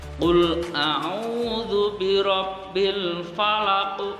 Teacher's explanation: huruf qafnya berada di akhir ayat, maka harus dipantulkan lebih berat, lebih tebal lagi ketimbang qalqalah sughra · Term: qalqalah kubra